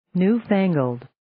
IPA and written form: njuː'fæŋəld (Newfangled)